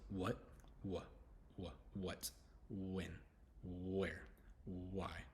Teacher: what when where and why the H is silent